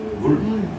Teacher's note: 원순모음 화라고 하는 거 즉 입술이 동그랗게 모양이 바뀌는 변화